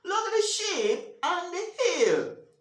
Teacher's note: I actually want my reader, my listener to focus on the ship and hill. So, I'm going to stress ship and hill.